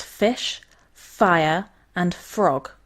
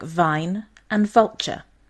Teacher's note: these two are known as the labiodental fricatives and as the name suggests involve the teeth and the lips